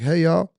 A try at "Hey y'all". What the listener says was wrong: You gotta get a little deeper in the throat and get it to come out.